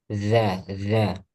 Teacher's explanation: Ujung lidah dan ujung gigi seri atas. Za, za. Hanya saja dia tipis. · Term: huruf dal